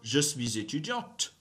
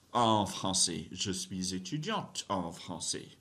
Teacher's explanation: Girls, you have to pronounce the T sound, right? You don't really pronounce the E at the end. You pronounce the T.